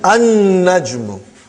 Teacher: You did not pronounce lam because noon is a shamsi, sun letter